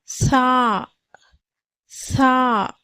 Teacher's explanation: நடுப்பற்களோட மேல் வரிசையோட அந்த ஓரங்களை தொடும்போது இந்த சாவுடைய சப்தம் பிறக்கப்படுகிறது